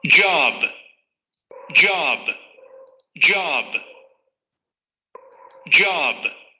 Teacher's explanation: africada postalveolar sonora y la tendríamos en palabras como job.